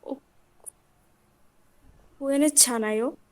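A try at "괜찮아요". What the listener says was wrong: হ্যাঁ, খোয়েনে না, খোয়েন। খোয়েন ছানায়।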